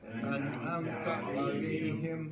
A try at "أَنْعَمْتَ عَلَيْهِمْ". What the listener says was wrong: See, when you break it up, it's not an'amta alayhim. You're making it rant together. An'amta alayhim. An'amta alayhim.